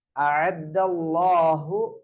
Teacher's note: அல்லாஹ்வுடைய லாம வல்லினமா வாசிக்க வேண்டும்